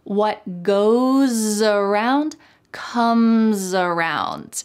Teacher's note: the S at the end of goes is followed by a vowel. So that S is going to sound like a Z in American English.